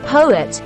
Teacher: The O in poet falls at the end of a stressed syllable and it sounds long.